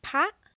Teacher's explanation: Now that's a high tone because it's a dead syllable and it's short.